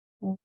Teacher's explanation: there is a schwa, there's a sound right before the N